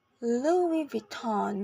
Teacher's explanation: with stress in both the first and second syllables in both American in British